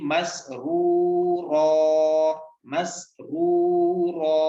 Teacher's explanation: So when the last letter has nothing and the second last letter has got two fatha, you have to skip one fatha from that and read with one fatha, and you have to stretch for 1 second as well. So you have to read ra alif fatha ra.